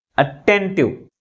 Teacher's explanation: Second syllable మిగిలిన syllables కంటే ఎక్కువ ఫోర్స్ గా పలుకుతుంది. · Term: స్ట్రెస్